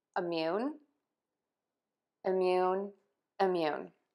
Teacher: You are going to pronounce this word by stressing syllable two. So that syllable is going to be louder and higher in pitch, and the vowel is going to be longer. And in this case, we are going to use the vowel you, as in you out there listening. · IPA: ɪmˈjun